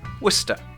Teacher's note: kind of blend together Worcester that's why the spelling is confusing the CES looks like it should be said as a syllable war cesta but actually it's just the end of one syllable and the start of another